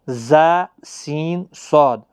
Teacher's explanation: حروف صفیریہ ان کو کہتے ہیں، ان کو سیٹی کی طرح تھوڑا تیز پڑھا جاتا ہے۔